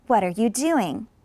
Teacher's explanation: you want an intonation that goes down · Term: falling intonation